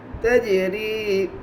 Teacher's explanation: جیم کے اوپر جزم ہے, جزم والے حرف کو پیچھے والے حرف سے ملا کر پڑھتے ہیں. جیم میں قلقلہ ہوگا اس لیے کہ جیم قلقلہ کے 5 حروف میں سے ہے · یا مدہ کو ایک الف کے برابر کھینچ کر پڑھے